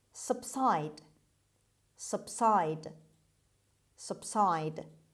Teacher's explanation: The stress is on the second syllable. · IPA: /səbˈsaɪd/